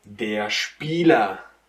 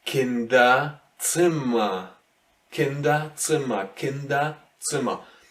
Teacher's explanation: So if R finishes the word, it has to become more of an A. So you might hear it here and there a bit, but it's basically an A here in the end of the word. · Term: R in the ending